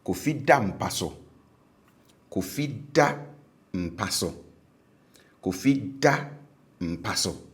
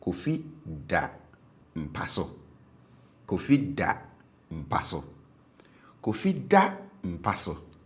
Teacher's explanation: Now, if you were listening for the tone as I was giving the two examples, you would notice that the tone on the habitual verb was high, and then the tone on the stative verb was low